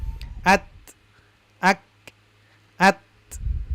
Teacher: suaranya tertahan tetapi ada aliran nafas yaitu huruf kaf dan ta. Maka kalau kita dengar ee huruf kaf dan ta ada suara atau aliran nafas terutama ketika sukun ya. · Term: syiddah mahmusah